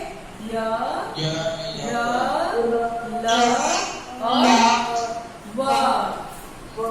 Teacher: ये जब अपना उच्चारण करते हैं तो इनकी जिह्वा जो है वो पूर्ण रूप से किसी भाग को टच नहीं करती है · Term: अंत्यस्थ व्यंजन